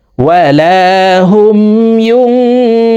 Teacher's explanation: এই নুন সাকিনকে নাকের ভিতরে লুকাইয়া গুন্নার সহিত পড়ব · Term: ইকফাহ গুন্না